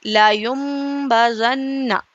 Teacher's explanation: نون کو میم سے بدلیں گے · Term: اقلاب